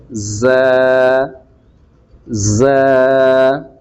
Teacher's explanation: ز کی آواز، ز کی ساؤنڈ کو تیز نکالا جاتا ہے، جس طرح سیٹی وغیرہ کی آواز ہوتی ہے